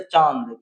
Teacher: तो ये अनुनासिक होता है, चांद आंख दोनों आवाज से, नाक और है ना मुंह से भी दोनों से आवाज निकलता है।